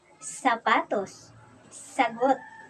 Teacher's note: Ang S ay napabilang sa pagilid at pasutsot. Ito ay walang tinig at binibigkas ito na S, S, S.